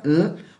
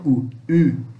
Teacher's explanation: Ele tem um som de um U gutural, semelhante ao U alemão, tá? Você pode pronunciar botando a língua no céu da boca, U, ou então fazendo um bico com a boca e falando U, U, tá?